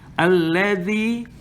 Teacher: the zal here is to put your tongue between your teeth.